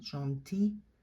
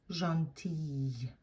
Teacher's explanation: That final L is not pronounced in the masculine form, but you hear it as a Y sound in the feminine form, and you linger on that Y sound at the end.